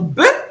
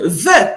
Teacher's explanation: le bet peut avoir une prononciation occlusive, donc be, ou alors une prononciation spirante, donc ve.